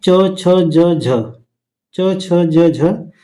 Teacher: च, छ, ज, झ ऐसा वर्ण है जो तालु से बोला जाता है। आगे जिसे तालाव्य व्यंजन कहा जाता है।